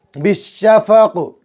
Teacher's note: بڑا شین اچھے سے نکالیں گے، زبان کا بیچ اور اوپر کا تعلق